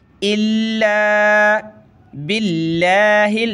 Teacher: लफ्ज़ अल्लाह से पहले ज़ेर है बा पर, तो लफ्ज़ अल्लाह को पतला करेंगे